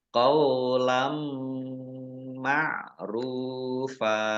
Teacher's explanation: Fathah tanwin bertemu dengan huruf mim bacaan idgham bi gunnah masuk dengan mendengung yaitu mendengung mim ditandai mimnya ada tasdidnya ditahan 2 harokat.